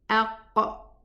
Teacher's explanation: So when we say aqqa, the furthermost part of the tongue strikes against the upper part, which is the soft part. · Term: qaf